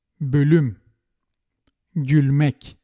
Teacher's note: In the words with Turkish origin with front vowels, we use the light L.